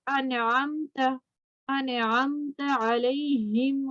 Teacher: تو عین جو ہے حروف ہلکی میں سے ہے. نون ساکن کے بعد والا حرف حروف ہلکی ہو تو نون کو اظہار کریں گے، ظاہر کر کے پڑھیں گے، نون پہ غنہ نہیں ہوگا